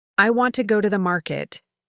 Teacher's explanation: you'll notice that want, go, and market stand out. The small words in between move quickly and lightly, like background notes. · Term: stress-timed language